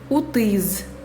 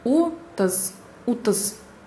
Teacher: А в татарских словах буква «ы» произносится короче. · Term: «ы» короткая